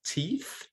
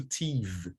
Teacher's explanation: contrasts the voiceless and the voiced interdental fricatives